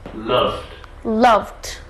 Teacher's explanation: And the love, it's a voiced v. So we pronounce d as d, this ed ending. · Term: d sound